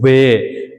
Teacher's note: यानी होठों से और दांतों से जो है दंतोष्टम, दांतों और होठों से जो है अपने आप ध्वनि निकल रही है, दंतोष्टम वह शब्द है।